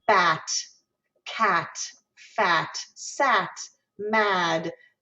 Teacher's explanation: it's actually not a diphthong it's a single sound that represents the ah in the word bat cat fat sat mad it's almost a little bit nasal